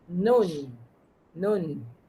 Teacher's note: Nun tepi hujung lidah ke gusi sebelah atas